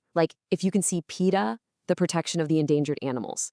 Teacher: The pitch dropped a little and the pace got a bit faster on that phrase, the protection of the endangered animals.